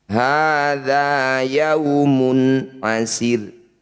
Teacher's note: Dumah tanwin bertemu ain disebut bacaan izhar halki. Bunyi dumah baca jelas, dumah tanwinnya dibaca jelas.